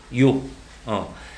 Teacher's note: 얘도 마찬가지로 이 오를 굉장히 빨리 하면 이렇게 발음이 될 것 같지만 실제로 요 했을 때 앞에 이가 날 듯 말 듯 하지. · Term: 반모음 이